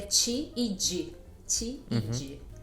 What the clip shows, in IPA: t͡ʃi and d(ʒ)i